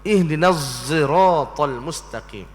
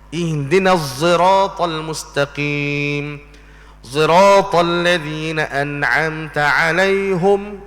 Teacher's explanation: Bagi Imam Hamzah, dia pada anak muridnya nama Khalaf, Imam Khalaf, dia baca dengan ismam pada huruf sad, ihdinas sirat dan juga sirata.